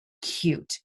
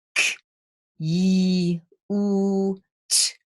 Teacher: Many people will think that's 3 phonemes, but it's in fact 4. It has that glide yi in there. And when I say it's a hidden glide, that's because we don't use the letter Y to represent it.